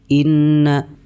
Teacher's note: Cara membacanya nunnya ditahan serta didengungkan. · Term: idgham ma'al gunnah